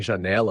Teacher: a sílaba tônica é né, enquanto já e lá são átonas. Essas sílabas funcionam como apoio na estrutura da palavra, mas não concentram a força da pronúncia.